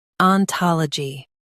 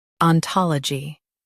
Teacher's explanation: Stress ta in US and tol in UK.